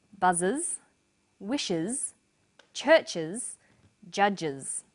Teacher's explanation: The first pronunciation of the final S is uz. It's pronounced this way after sounds such as s, z, sh, ch and j.